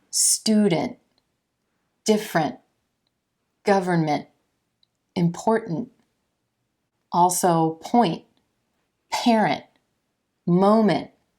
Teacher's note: actually resonating in the nose and stopping in the throat so you get the nasal quality of the MM with the stopping of the T